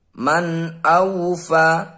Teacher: ada nun sukun bertemu huruf alif ini adalah bacaan izhar halqi kita harus membacanya dengan jelas